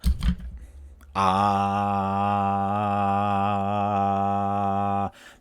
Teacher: Now that's a vowel, obviously, but you can feel the vibration in your throat, and that means it's voiced.